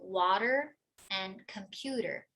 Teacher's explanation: The flapped T or D in the medial position does sound exactly like a Portuguese R